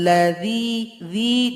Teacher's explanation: Adzi dua harakat huruf dzanya ujung lidah dengan ujung gigi